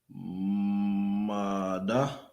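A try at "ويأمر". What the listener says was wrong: That's a Ra.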